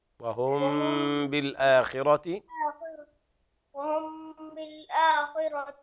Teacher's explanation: الميم تخفى حركتين مع الغنه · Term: الغنة